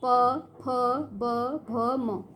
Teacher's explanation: उच्चारण स्थान होंठ, ओष्ठ कहा जाता है होंठ को। ठीक है, प बोलते समय क्या हो रहा है? हमारे जो होंठ हैं वो आपस में जुड़ रहे हैं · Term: प वर्ग